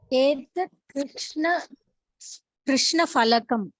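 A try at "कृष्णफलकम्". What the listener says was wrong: Is there a word? Is there any letter called Fa in Sanskritam? Pha. Mahaprana. So normally people tend to make a mistake.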